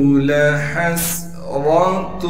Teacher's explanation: لام کو بغیر کھینچے پڑھیں گے، ہا کو صاف کر کے گلے سے نکالیں گے، گلے کا وہ حصہ جو منہ کی جانب ہے، اور ہا کو آگے سین ساکن سے ملا دیں گے۔